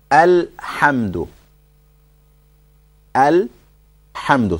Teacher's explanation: And after saying al, there's no return of sound on the lam. There's no sound that comes back.